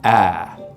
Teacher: So in most accents of English, the vowel sound in words like cat, bag, what we call the trap vowel, is something like ah, right? We make it with the tongue cupped down low and towards the front of the mouth like this.